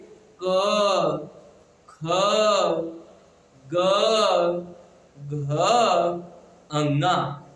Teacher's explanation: आप पूरा पढ़िए, क आपके केवल गले से आवाज आती है और कहीं स्पर्श नहीं होता है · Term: कंठ